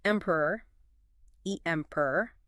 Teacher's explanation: the first syllable is the strongest